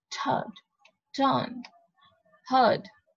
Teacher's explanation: And previously in the word bird, it was replacing I and R as in third. Okay, so basically we're not pronouncing R, we're just using a vowel there, third. Okay, so this is R is not prominent, but it's closer to R sound. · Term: bird sound